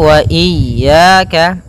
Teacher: Hati-hati jangan sampai memanjangkan ya-nya atau tidak mentasydidkan ya-nya.